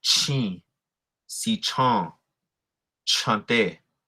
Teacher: the aspirated breathy CH sound